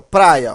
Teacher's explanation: eu tenho o a e o i formando um ditongo decrescente